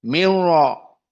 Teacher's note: Di sini idgham nun kepada ra, namun tidak ada gunnah, tidak ada 2 harokat.